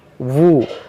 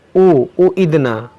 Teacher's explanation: ऊ नहीं पढ़ना है आपको। देखिए वाव पेश ऊ नहीं होता है, वाव पेश वू होता है, हमज़ा पेश ऊ होता है।